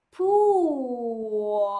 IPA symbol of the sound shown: u: